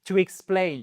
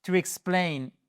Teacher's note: c'est votre seconde syllabe et c'est celle qui est porteuse de l'accent tonique